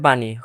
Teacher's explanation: মূর্ধন্য ন উচ্চারণ করতে গেলে দন্ত নয়ের মতো হবে